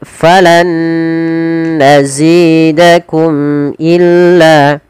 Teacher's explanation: Mim mati ketemu hamzah, kita hukumi dengan izhar syafawi, mimnya harus jelas.